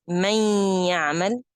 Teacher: I didn't hit the noon articulation point at all. I just use the ghunna in the letter noon from the nasal passage, and I use the articulation point of ya